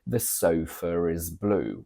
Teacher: British English for example we would say the sofa is blue with an extra R between sofa and is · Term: intrusive R